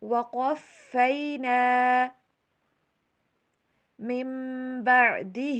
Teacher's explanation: موسی الکتاب وقفینا، وقف، قاف کو موٹا کر کے پڑھیں گے، فا کے پر تشدید آ رہی ہے، اس کے اوپر ہم سٹریس دیں گے